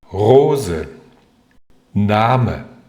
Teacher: 因为这两个词的重音都落在第一个音节上，而这个音节刚好是开音节